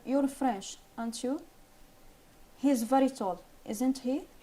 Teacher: Falling intonation on the question tag gives the impression that the statement is correct. If we are sure or almost sure that the listener will confirm that our statement is correct, we say the question tag with a falling intonation.